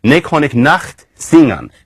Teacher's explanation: And there was also a nice velar fricative